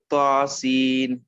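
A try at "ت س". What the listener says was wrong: تو آپ موٹا نہیں پڑھیں گے، تا باریک.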